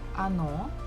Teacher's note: the second syllable is stressed, so we must pronounce it O. The first one is not, so we pronounce it as A.